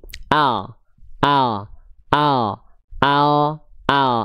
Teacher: Tepi lidah bagian depan kanan dan kiri menyusur sampai keduanya sampai ke ujung lidah